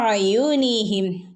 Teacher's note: രണ്ടോ അല്ലെങ്കിൽ നാലോ ഹറക്കത്തിന്റെ അളവ് വരെ നമുക്ക് ദീർഘിപ്പിച്ച് ഓതാവുന്നതാണ് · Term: മദ് മുൻഫസിൽ